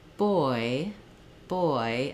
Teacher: So when I say boy, boy, I can really hold that vowel sound longer. · i can really hold that vowel sound longer gives me time to make that movement and that gliding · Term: oi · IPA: /ɔɪ/